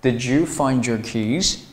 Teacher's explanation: 当一个单词是以浊辅音的的结尾加上一个半元音▁ye▁开头的单词的时候，哎，这两个单词要产生连读啊，要被同化成第三个音，就是▁j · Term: 音的同化